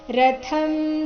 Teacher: ರಥಂ ಥ ಮಹಾಪ್ರಾಣ ಹ್ರಸ್ವ ಬರಬೇಕು